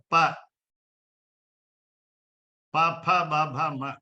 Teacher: Aspirated consonants and unaspirated consonants, and also finally one nasal. Ma is nasal. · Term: Pavarga